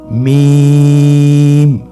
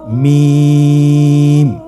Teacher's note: মিম হরফটি উচ্চারণের ক্ষেত্রে অবশ্যই বারিক হবে, পাতলা হবে এবং 3 আলিফ টেনে উচ্চারণ করতে হবে।